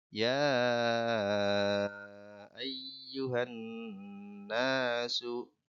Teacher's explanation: Panjangnya bisa 4, 5 atau 6 harokat. Kemudian pada lafaz an-nasu itu ada nun bertasjid atau dibaca hunnah. Ditahan ya, ditahan. An-nasu. Kalau disambung ya ayyuhan nasu.